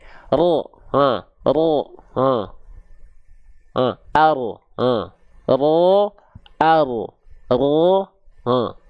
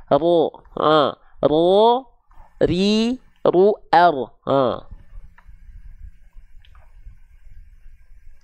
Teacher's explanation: si ujung lidahnya itu tidak nempel ke langit-langit makanya dia membentuk seperti V tadi karena yang disentuhkan bagian punggung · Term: huruf ra